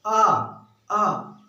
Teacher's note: आपने बोला आ तो किससे बोला जा रहा है दोस्तों, पश्च भाग से बोला जा रहा है